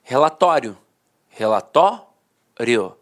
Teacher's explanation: A penúltima sílaba era a sílaba mais forte e a última de fato, perdia a força. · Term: paroxítona terminada em ditongo